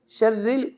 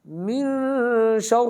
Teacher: را باریک ہے، مشدد ہے پھر بھی باریک، زیر ہوگی پھر بھی باریک، بغیر شد کے ہوگی پھر بھی باریک ہے.